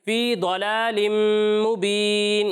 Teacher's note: غنہ کرنا ہے، اور غنہ کی مقدار ایک الف کے برابر ہے، وہ مقدار آپ پوری نہیں کر رہے، ٹھیک ہے، غنہ کی مقدار آپ نے پوری کرنی ہے، فی ضلال مبین۔